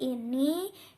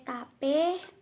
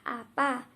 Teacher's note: Vokal depan seperti bunyi I, E, dan A, contoh I ini, E tape, A apa.